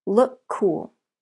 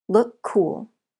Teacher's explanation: the letters here are different C and K but the sounds are the same so we link the words and they share the sound